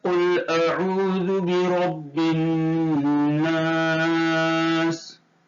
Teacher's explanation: سب سے پہلا، واو ساکن سے پہلے عین کے اوپر پیش ہے، اس لیے واو مدہ ہوگا۔ واو مدہ کو ایک الف کے برابر کھینچ کر پڑھیں گے